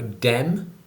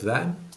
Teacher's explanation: some features would include th stopping, so dem instead of them